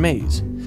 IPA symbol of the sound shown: z